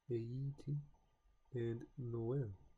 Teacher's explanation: This accent indicates that the two vowels are pronounced separately, each having its own distinct sound